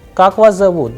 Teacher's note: this person is asking a question so the sound would go higher at the end